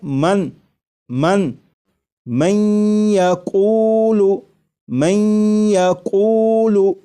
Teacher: نون ساکن کو یا میں ادغام اس طرح کریں گے کہ غنہ بھی ہو، جیسے لکھا ہوا ہے من من یقول من یقول، تو میم کے بعد آپ کو یہ جو آواز آ رہی ہے این یہ نون ساکن کا یا میں ادغام بھی ہو رہا ہے، اور ادغام اس طرح ہو رہا ہے کہ غنہ کے ساتھ۔